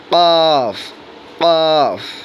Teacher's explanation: 4 number মাখরাজ, জিহ্বার গোড়া তার বরাবর উপরে তালুর সঙ্গে লাগাইয়া, অর্থাৎ কণ্ঠনালী যেখানে শেষ, জিহ্বার গোড়া সেখানে শুরু। ক, ডিপ করে, ক, কফ।